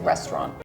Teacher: usually we smoosh it and not say the middle we just say restaurant